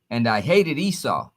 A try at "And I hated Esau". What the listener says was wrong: Oh, read that slow and powerful. Don't read that fast. Don't read it fast. Don't hold back. Read it powerful and hard.